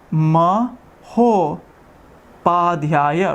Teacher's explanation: you remove the A and the U, making an O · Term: Guna Sandhi